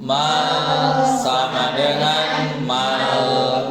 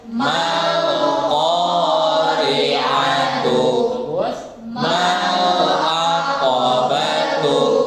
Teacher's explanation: lidahnya di dalam ya, di makhraj lam tidak boleh keluar lidahnya ketika membaca lam suun.